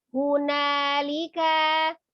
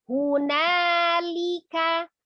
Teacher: li-nya sempurna ismamul harokahnya turunkan bibir dan rahang bawah dengan asal bunyi li.